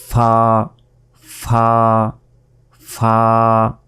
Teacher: ঠোঁটে কামড় দিতে হবে